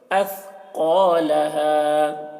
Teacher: قاف کو موٹا کر کے پڑھ رہے ہیں